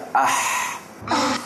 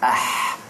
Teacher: Macam kita pedas, Ah. Kat mana tu dia keluar? Kat tengah-tengah halqum ni.